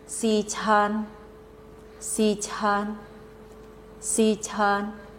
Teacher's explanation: All of the word is the first tone.